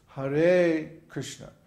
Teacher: in Hare, for example, the first syllable is short and the second syllable is long